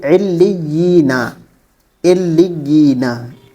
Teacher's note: لام کو لام کو پہلے عین سے ملایا، پھر اس لام کو یا سے ملایا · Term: تشدید